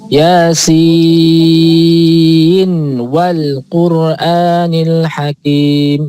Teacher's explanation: sinnya nunnya tetap dibaca n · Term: izhar li riwayah